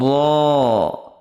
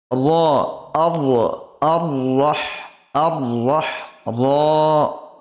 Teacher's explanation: জিভের আগার উল্টো পিঠ ও তার বরাবর উপরের তালুর সাথে লাগিয়ে উচ্চারিত হয় র।